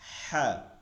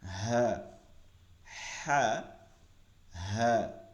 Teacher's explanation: লম্বা হা করব গলার মধ্য থেকে ফিসফিস আওয়াজে হ্যাঁ, গোল হা করব গম্ভীর আওয়াজে